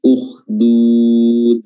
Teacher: Huruf dal di depan lagi, yaitu bertemu dengan gigi seri atas, ya, bagian belakang tentunya. Dah, ya, bertemu dengan gigi seri, jangan hanya sekedar bertemu dengan gusi saja.